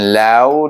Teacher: Kemudian lau di sana bertemu dengan kalimah lau yang dibaca dengan lin sebab sebelum waw baris atas